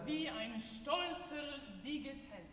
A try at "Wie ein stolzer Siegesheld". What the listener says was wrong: Yes. And you see, when you isolate it, it's not so